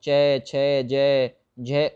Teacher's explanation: च वर्ग जिसे हम लोग तालु नाम देते हैं